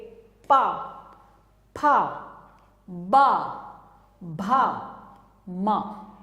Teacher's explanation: प वर्ग में आप देखेंगे दोनों जो लिप्स हैं वो मिलेंगे।